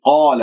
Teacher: قاف مفتوحة بعدها ألف مفخمة مرتبة أولى، من غير أن أقول قال، لا تكوير للشفاه، ألف ساكن قبلها مفتوح، راح يكون ما الطبيعي مقدار حركتين.